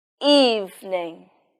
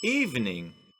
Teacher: In this word, the stress is on the first syllable.